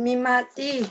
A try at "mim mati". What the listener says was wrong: Habis kamu bilangnya nggak jelas kayak mie mati.